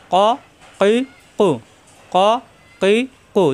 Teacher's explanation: ফা এখানে উপরে দুই নক্তা আসছে কফ জিব্বার গোড়া থেকে উচ্চারণ জিব্বার গোড়া উপরে তালুতে চাপ দিয়ে